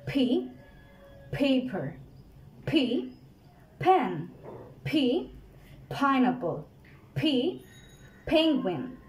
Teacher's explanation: এটা কিন্তু একটা aspirated letter, আমরা কিন্তু এটাকে একটা জোরে বাতাসের প্রেসার দিয়ে বলবো P P. So most of the time আমরা কিন্তু শুধুমাত্র এটাকে P বলে রেখে দেই, এটা কিন্তু P না, এটা হচ্ছে P P P.